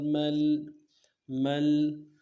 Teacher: لام ساکن بغنہ نہیں کریں گے